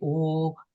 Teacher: O is even deeper. So it's more of a back tongue vowel.